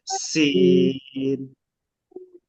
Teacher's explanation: শিরশির পাতলা আওয়াজ, বাতাস বের হবে